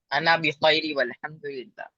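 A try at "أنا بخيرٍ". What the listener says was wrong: بخیر، تو انا بخیری نہیں، انا بخیرین پڑھیں. تنوین، صاف صاف تنوین پڑھیے.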